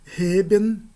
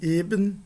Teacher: a aspiração da primeira vogal no primeiro caso e a ausência de aspiração da primeira vogal no segundo caso